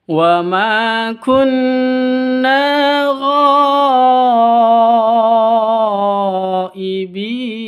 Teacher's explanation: Berhubung di sini satu kata, maka ghaibin ini panjangnya wajib 5. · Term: mad wajib muttasil